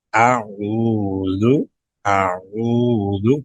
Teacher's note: پہلے حمزہ کو سادہ پھر عین ادا کریں گے گلے کے درمیان سے